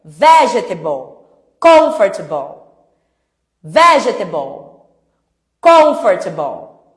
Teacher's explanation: A sílaba forte é a primeira.